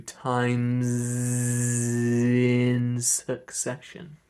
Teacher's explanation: Times in succession instead of times in succession, like that. We want the z, the voice, to keep going through.